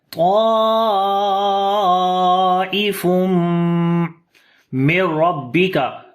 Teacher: That's why we make madde muttasil, which we long 4 to 5 counts here. After the tanween, the next letter is mim. We make idgham with ghunna because of shad sign on the mim as well.